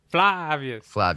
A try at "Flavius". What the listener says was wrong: Flavius, Need to open the A, fla.